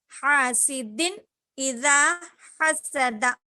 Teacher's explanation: بغیر غنہ کے جلد پڑھیں گے اور اس کو ہم اظہار کہتے ہیں